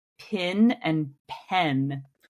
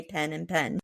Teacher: So the E and the I, the short E and the short I become interchangeable.